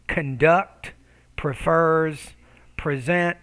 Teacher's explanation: But sometimes with two syllable verbs, conduct, prefers, present, it is common to stress the second syllable. When you stress that second syllable, you want to make that syllable clearer, louder, longer, and higher pitched. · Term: word stress